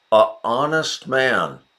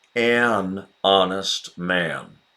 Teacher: Honest starts with the vowel sound, silent H, so we have to get a consonant sound in front of it.